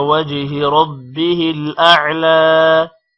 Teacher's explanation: وجہی جیم پر قلقلہ ہے، ربہ را موٹا ہوگا، اعلی لام تھوڑا لمبا ہوگا